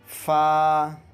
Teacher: اوپر کے دانتوں کا کنارہ نیچے کے ہونٹ سے مل کر فا ادا ہوتا ہے۔